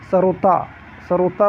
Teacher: सरोता, सरोता बोलेंगे तो दंत में जाके आपकी जीवा टकराएगी।